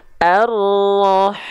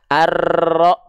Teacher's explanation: jadi dia bergetar tapi tak terlampau berlebihan